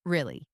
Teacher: But if I say it with a rise in intonation, really, it expresses genuine surprise. If I say it with a low skeptical tone, really, it expresses doubt or even sarcasm